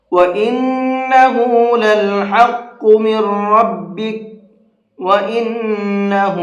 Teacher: نون کے اوپر تشدید ہے تو یہاں پر غنہ کریں گے